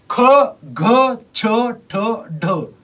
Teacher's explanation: यांना महाप्राण व्यंजने का म्हणतात तर महाप्राण व्यंजन म्हणजे काय तर ज्या व्यंजनांचा उच्चार करताना उच्चारांमध्ये ह ची छटा असते